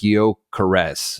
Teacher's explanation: it's like a softer S instead of a Sh sound